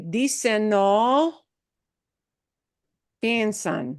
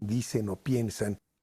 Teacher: the N from the end of dicen is uniting or joining into the next word. And the next word is just O.